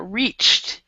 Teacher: because it's a ch right there we would actually pronounce this as a T so we wouldn't have use the E and we wouldn't do